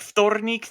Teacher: In words like вторник, the v is first so it devoices. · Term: devoiced